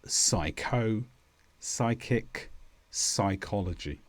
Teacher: Well, we usually say sigh. The P disappears completely and we say words such as psycho, psychic, psychology.